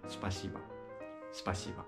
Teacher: アクセントのないボはバになります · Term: アクセントのないO